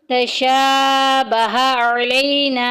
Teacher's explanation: تشا میں شین کے اوپر کھڑی زبر آ گئی، 1 الف کے برابر لمبا کریں گے۔ تشابہ علینا، علینا میں دیکھیں الف پیچھے زبر الف مدہ کا قاعدہ جاری ہو رہا ہے اور آگے وقف کی علامت آ گئی، تو ہم نے یہاں پہ صرف اور صرف سانس توڑنا ہے، نون کی حرکت کو ہم پڑھیں گے۔